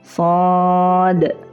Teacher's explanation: Da sukun itu qalqalah dipantulkan